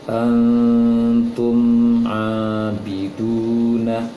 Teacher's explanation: Yang didengungkan adalah antum, tumnya tidak dengung.